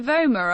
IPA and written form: ˈvoʊmər (vomer)